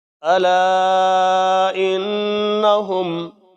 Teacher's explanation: لا چھوٹی مد ہے، اس کو لمبا کریں گے 2-3 الف کے برابر۔ حمزہ نون زیر ان، نون زبر نا، ان، نون کے اوپر شد ہے، دیر لگائیں گے۔